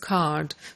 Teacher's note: the dropping of post vocalic R